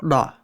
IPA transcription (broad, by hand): ɺ